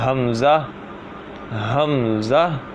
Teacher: حمزہ بھی جو ہے یہ بھی ہا کی طرح حلق کے نیچے والے حصے سے ہی ادا ہوتا ہے